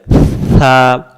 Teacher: জিহ্বাটার আগা থেকে হালকা বাতাস বের হবে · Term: সিন অক্ষর